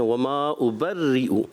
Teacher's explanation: را کو باریک رکھنا ہے, یہاں پور کی طرف جا رہے تھے آپ, تو باریک رکھنا ہے, غنوں کی مقدار پوری رکھنی ہے, مد کو بھی پورا رکھیں.